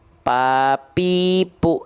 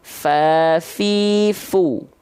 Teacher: yang nempel itu adalah bibir atas dan bibir bawah yang nempel. Jadinya nggak keluar nafas, mampet. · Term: huruf P